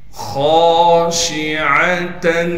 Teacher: عین کو صاف کر کے گلے سے نکالیں گے · خا کو موٹا کر کے پڑھیں گے اور خا کے بعد الف مدہ ہونے کی وجہ سے خا کو ایک الف کے مقدار کھینچیں گے ، شین کی آواز کو صاف کر کے نکالنا ہے، عین